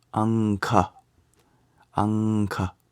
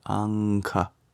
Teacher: For example, if you had the anusvara before a K sound, then it would be anka, anka. You just nasalize before you make the K sound